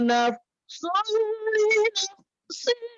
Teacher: Nafsulli itu adalah idgham bila gunnah, jangan pakai dengung ya